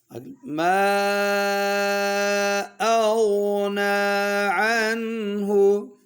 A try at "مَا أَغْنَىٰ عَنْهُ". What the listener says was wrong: अम्मा नाक में नहीं पढ़ना. ما أغنى عنه ما أغنى عنه